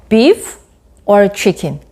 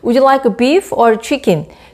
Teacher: 고를 때는 A는 rising intonation을 B는 falling intonation을 취해요. 그래서 beef or chicken 이렇게 하겠죠.